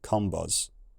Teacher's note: That nasal vowel in the blue culture shortens, giving zob, while those rounded vowels in the red culture lose their lip rounding, giving combuz.